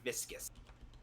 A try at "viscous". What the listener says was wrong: It's pronounced viscuous. The U is important.